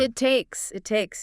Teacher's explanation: With this one, notice how it takes links together. The final T of it connects right into the T of takes. It sounds almost like one blended word.